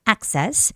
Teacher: The stress goes on the first vowel, which is A, access.